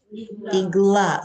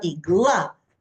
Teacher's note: The stress is on the last syllable.